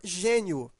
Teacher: veja que esse I ele é pronunciado fraco Ele está ao lado de uma vogal e ele tem um som de i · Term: semivogal